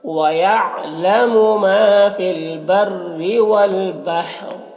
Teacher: را کا زیر سکون سے بدل جائے گا وقفی کی صورت میں، تو را کو پر پڑھیں گے